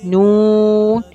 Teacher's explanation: چلے آئیے آگے دیکھتے ہیں، نون۔ مخرج، زبان کی نوک اوپر کے سامنے والے مسورے سے لگتی ہے اور ناک سے آواز نکلتی ہے